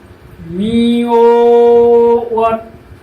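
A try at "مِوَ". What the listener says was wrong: ওয়াত কেন? তার তো কোনো কারবারই এখানে নাই। মিম ধরছে ওয়াও, মিউ। ওয়ার উপরে জবর ওয়া। কারণ জবরটা একালিফ মনে হবে না।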